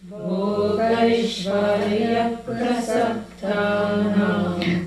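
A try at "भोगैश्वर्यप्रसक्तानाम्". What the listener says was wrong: I'm not hearing the A's. Bhogaishwarya prasaktanam.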